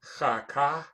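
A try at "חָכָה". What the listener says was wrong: No, there's no dot in that cha, so it's a ch sound, not a k sound. Oh, no, it's not a shva. It's not the vowel, it's the consonant. You said cha ka.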